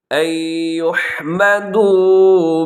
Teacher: یہاں نون ساکن کی بعد یا ہے تو یہاں ادغام ہوگا غنے کے ساتھ